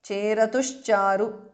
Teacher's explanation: Visarga changes to sh. Charu. Cheratushcharu because of sandhi.